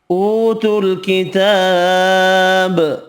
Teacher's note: اوتوا الکتاب، واو مدہ کھڑا زبر ایک ایک الف کی مقدار میں کھینچ کر پڑھیں گے، با ساکن پڑھا جائے گا وف کی صورت میں، اور با ساکن پر قلقلہ کرنا ہے